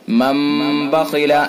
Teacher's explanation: قلب ہوتا ہے، یعنی نون ساکن یا تنوین کو میم سے بدل کر پڑھیں گے۔ یہ چھوٹا سا جو میم بنا ہوا ہے، ہم قاعدہ یاد رکھیں کہ نون ساکن یا تنوین کے بعد اگر با آئے تو وہاں قلب ہوتا ہے، قلب یا اقلاب، اس کے اندر بھی غنہ ہوتا ہے۔ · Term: قلب اقلاب